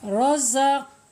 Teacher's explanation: Awas, harus dipantulkan ya. Kalau nggak dipantulkan cara bacanya berarti tidak benar ya, karena sifat qalqalah jadi hilang.